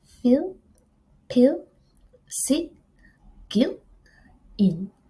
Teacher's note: Next is I, a closed front vowel sound, pronounced on the front of part of the vocal tract and with the tongue half close to the roof of the mouth and the lips in a spread position